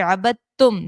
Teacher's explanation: دال کی آواز نہیں آتی، تا کی آواز آتی ہے